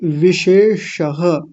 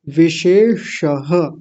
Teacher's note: पहला वाला तालव्य शकार दूसरा वाला मूर्धन्य शकार है